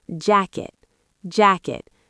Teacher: In American English, that T in jacket often becomes a stop T.